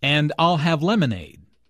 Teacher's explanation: Notice how stresses I'll and lemonade to emphasize her choice.